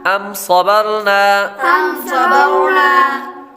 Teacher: اس لفظ کے اندر میم ساکن کے بعد با اور میم کے علاوہ کوئی اور حرف آ رہا ہے تو غنہ نہیں کریں گے، اظہار شفوی کا قاعدہ لگے گا۔ صاد حروف مستعلیہ میں سے ہے، اس لیے اس کو پر پڑھیں گے۔ · صاد حروف مستعلیہ میں سے ہے، اس لیے اس کو پر پڑھیں گے۔ آگے را ساکن سے پہلے حرف یعنی با پر زبر ہے تو را کو پر پڑھیں گے